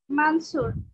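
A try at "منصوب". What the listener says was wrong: মানসুব উচ্চারণ করেন না, না, ব ব।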